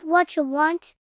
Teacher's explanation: It's an unstressed word, so it gets reduced. The vowel sound weakens so much that it almost disappears entirely.